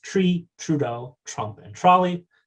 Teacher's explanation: it's a very posteriorized and affricated